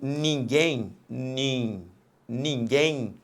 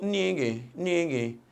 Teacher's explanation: repare que no final, este M representa um I, aqui representado foneticamente pela letra Y. Quando este M final for representado representar um I, ele vai ser uma semivogal. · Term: ditongo fonético